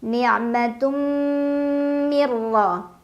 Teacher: Ada idgham bila gunnah karena ada nun sukun yang bertemu dengan huruf ra. Dibaca nun sukunnya masuk ke ra tanpa dengung, jadi cukup ditekan. Mirra, ra dibaca secara tafkhim karena ra berbaris fathah, jadi bacanya tebal. · Tadarakahu ni'matum, tum ada idgham bi gunnah karena ada tanwin dhammah yang bertemu huruf mim. Dibaca tanwin dhammahnya masuk ke mim sambil berdengung.